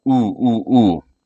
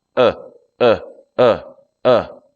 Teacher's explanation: So I wouldn't say ooh. My mouth doesn't kind of protrude. It just stays very relaxed.